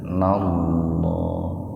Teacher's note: Lafzul jalalah didahului oleh doma, jadi lafaz Allahnya dibaca tebal.